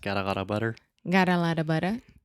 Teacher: so if you say that really fast got a lotta butter got a lotta butter that is the flap T